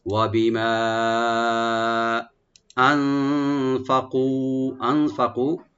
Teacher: নুন সাকিন এখানে আমরা ইখফা করব, লাইট গুন্না , ফা ওপেন থাকবে, কাফটাকে আমরা একটু এক আলিফ টানবো এখানে,